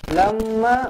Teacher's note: Minkum lamma khiftukum, lamma mim sabdu wajibul gunnah, dengungkan dua harokat